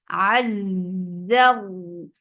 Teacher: Az, ayn from your throat, attach it. Za will get sifa of raqawa. And raqawa is flow of sound.